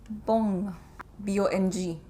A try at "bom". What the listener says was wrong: Yeah, but without the G, so bom.